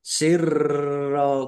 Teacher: rnya dibaca dobel ada tasdidnya ditekan ya dan agak ditahan biar tampak dobelnya